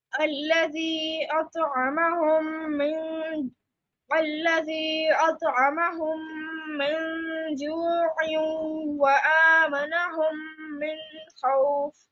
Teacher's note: You applied ikhfa at the end, that was wrong because kha is one of the throat letters, so on noon we have to apply izhar, not ikhfa.